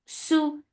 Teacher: The sound is short. Su for the circular lips, make it 2 counts long